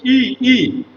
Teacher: ই আমার জীভর লেভেলটা অনেক উঁচুতে থাকে। মানে এই ধ্বনিগুলো উচ্চারণের সময় জীভার লেভেলটা উঁচুতে থাকে। · তো লক্ষ্য করো, আমি যখন রস্য ই ধরে উচ্চারণ করছি, ই ই, আমার জিহ্বার লেভেলটা অনেক উঁচুতে থাকে।